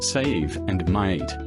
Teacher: The long E in words such as save and mate is more elongated and contains a stronger Y sound, so would sound more like I.